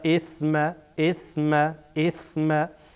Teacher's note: سر زبان برخورد میکنه به سر دندان های بالایی که در پیشین قرار داره